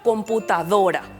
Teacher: aquella que cuando pronunciamos decimos con mayor fuerza por ejemplo computadora vemos que la sílaba más fuerte en la que recae el sonido es la penúltima sílaba do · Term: sílaba tónica